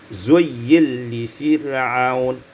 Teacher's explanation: Pada ayat yang ke-37 Zuyyina li fir'aun, idgham nun fil lam, diidghamkan nun pada lam maka menjadi zuyyil li fir'aun.